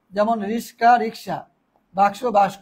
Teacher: দুটি ব্যঞ্জন পরস্পর স্থান পরিবর্তন করবে। ধ্বনি বিপর্যয় মানে হচ্ছে এটা এদিকে আসবে, মানে এটা এদিকে যাবে, এটা এদিকে আসবে, এরকম ধ্বনি বিপর্যয়, বিপর্যয় ঘটবে।